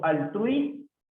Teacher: Porque hay concurrencia vocal, dictón, ¿correcto? Y sabemos que la sílaba que tiene la mayor fuerza de voz es trui. Es una palabra grave porque es la segunda sílaba la que tiene la mayor fuerza de voz.